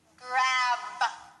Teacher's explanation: you need to say the strong B sound closing and opening your mouth and using your voice